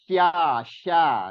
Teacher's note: Kalau sya ini ada sifat tafashi namanya. Tafashi itu keluarnya angin, menyebarnya angin di permukaan lidah kita, di dalam mulut, rongga mulut. Sya menyebar, angin-anginnya lebih banyak menyebar di situ.